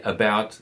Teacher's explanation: when you say about, the second syllable is stressed, not the first